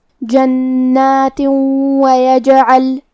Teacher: کلمت جنات میں نون پہ تشدید ہے تو ہمیں حرف النون کو 2 حرف کے برابر پڑھنا ہے